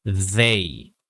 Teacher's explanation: I'm kind of hearing like a D sound instead of a hard TH sound